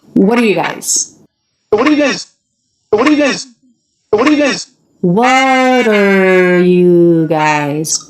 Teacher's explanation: the t comes between two vowels so that becomes a flat t